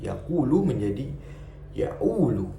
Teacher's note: dialek Mesir yang merubah kata suara qaf menjadi alif